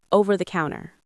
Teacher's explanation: Notice how native speakers turn those three words into one connected sound.